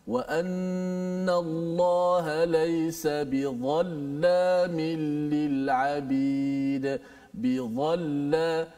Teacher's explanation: Hujung gigi kita diletakkan di atas hujung lidah, keluarlah daripadanya huruf dha.